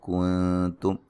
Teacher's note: نون ساکن کا یہاں باریک اخفا ہے